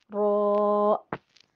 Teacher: زبان کی پشت والا کنارہ سامنے کے دو دانتوں کے مسوڑوں سے لگے تو رو ادا ہوتا ہے۔ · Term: رو کا مخرج